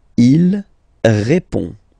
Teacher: So, final D is not pronounced. You only have this on nasal sound at the end.